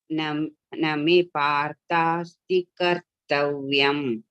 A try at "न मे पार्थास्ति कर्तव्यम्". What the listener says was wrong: Here this is dirgha. Name Parthasti kartavyam.